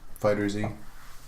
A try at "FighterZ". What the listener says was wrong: It's not Fighter Z, isn't it pronounced Fighters? I think that's how it is pronounced, but I knew what you were talking about.